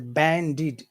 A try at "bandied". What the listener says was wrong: But so that vowel sound, again, it must be very long because of the D. Very long. And number one is very short. Yeah, but make the E longer.